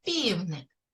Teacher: який перший звук у слові півник з М'який приголосний звук так перший звук звук п він звучить м'яко